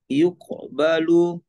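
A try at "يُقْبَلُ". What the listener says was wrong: Kof. Kofnya itu pantulannya jangan disimpan yuk. Tapi yuqbalu dikeluarkan saja. Yuqbalu.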